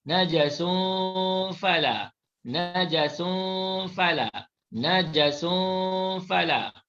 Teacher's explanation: Kali ini ikhfa hakiki, tanwin dibaca secara sembunyi ataupun dibaca secara tidak jelas.